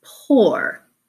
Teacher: p, which is a stop formed with our lips together in our mouth